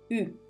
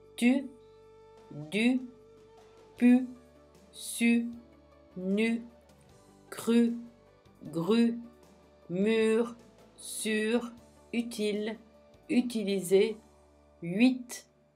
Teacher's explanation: Le son U est une voyelle arrondie. Pour le prononcer, il faut arrondir les lèvres. Nous formons un rond avec les lèvres.